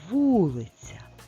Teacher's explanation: наголос на першому складі над звуком і буквою у